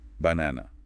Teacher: Humming it. Yeah, like for banana, you'd hum the second syllable a bit longer and maybe slightly higher pitch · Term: stressed syllable